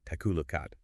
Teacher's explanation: The K in take slides into the A, the K in look slides into at, takalookat. >> It's a perfect example of consonant-vowel linking.